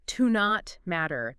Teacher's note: The T in not kind of blends into the M.